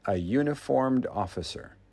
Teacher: This word begins with the Y sound, and that is a consonant.